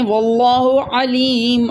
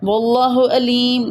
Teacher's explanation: عین کی جگہ پر آپ نے حمزہ پڑھ دیا